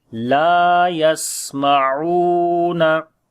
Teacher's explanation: Una ain we read from the middle of the throat, and also we long it is waw madda